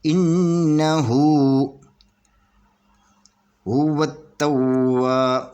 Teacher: یہ الف اور لام نہیں پڑھیں گے، اور واو کو تا کے ساتھ ملا کر پڑھیں گے ، اور تا یہ ہے یہ ڈبل پڑھی جائے گی، 2